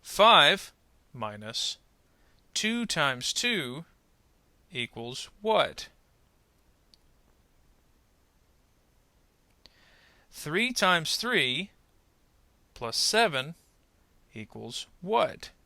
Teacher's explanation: we'll pause in between each particular idea in the kind of order of operations and then put the final rising and falling pitch at the end